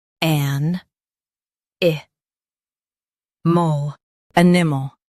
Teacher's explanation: Stress the an and keep i mal light.